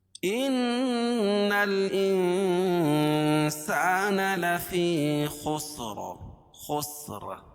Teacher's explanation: تو قاعدہ ہے کہ را ساکن ما قبل ساکن، اس سے پہلے زبر یہ پیش ہو تو را پر ہوتی ہے، اور یہاں را کو پر پڑھیں گے وقف کی حالت میں